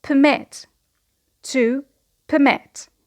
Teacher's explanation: because it is a verb, the stress is on the second syllable, to permit